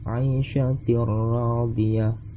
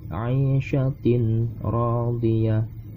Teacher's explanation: Ketika tanwin bertemu huruf ra di dalam tajwid, hukumnya menjadi idgham bila gunnah dan bunyinya seperti 'aishatir radiyah, bukan 'aishatin radiyah, tapi 'aishatir radiyah. Bunyi tanwin langsung masuk ke dalam ra.